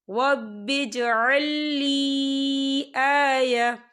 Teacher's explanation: یہاں پر یا مدہ ہو رہا ہے، یا ساکن ہے، یا ساکن سے پہلے زیر ہے اور اس پر چھوٹی سی مد بھی ہے، تو ہم اسے 4 حرکت کے برابر کھینچ کے پڑھیں گے